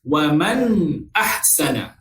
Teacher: Kita baca secara jelas dan nyata sifat nun yang mati. Itu maksud izhar. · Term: izhar halqi